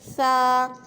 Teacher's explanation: ثا کو پڑھتے وقت ہماری جو زبان ہے وہ دانتوں کی زبان کی جو نوک ہے وہ دانتوں کے درمیان میں لگتی ہے